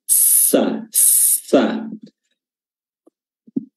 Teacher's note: Huruf sin makhrajnya juga di ujung lidah bertemu dengan gigi seri ujung gigi seri bawah dan gigi tertutup.